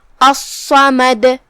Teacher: جیسا کہ یہاں حرف الصاد ہے تو یہ 2 صاد ہے، صاد ساکن اور صاد متحرک زبر سے، لہذا تشدید کا خاص دھیان دینا چاہیے، کیونکہ اگر ہم اسے صحیح سے ادا نہیں کیے تو گویا کہ ایک حرف نہیں پڑھتے. صاد کو ہم بھاری آواز میں بھی پڑھیں گے کیونکہ وہ حروف تفخیم میں سے ہے · کلمت الصمد میں یہاں جو کہ حرف الصاد پہ تشدید ہے تو ہم 2 حرف کے برابر صاد کو پڑھیں گے، کیونکہ تشدید کی اصلیت 2 حرف ہوتی ہے.